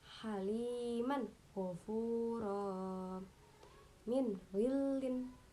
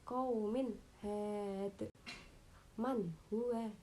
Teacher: nun sukun dan tanwinnya itu dibaca jelas, nggak boleh mendengung. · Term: idhar